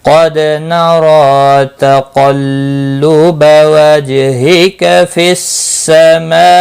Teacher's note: قاف مستعلیہ ہے، پر پڑا جائے گا، دال ساکن پر قلقلہ ہوگا، را کے اوپر کھڑی زبر ہے، ایک الف کے برابر کھینچ کر پڑھیں گے، را پر بھی پڑا جائے گا۔